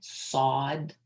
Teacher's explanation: It's a heavy S. It's sod. Okay, you're gonna make sure your mouth is open.